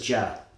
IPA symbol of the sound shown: d͡ʒ